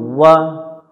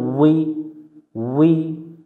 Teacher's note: ওয়াও অক্ষর 2 ঠোঁটের মাঝখানের ফাঁকা থেকে পড়তে হয়। এই অক্ষরটা উচ্চারণ করার সময় মুখটা গোল করে নিতে হবে একটু।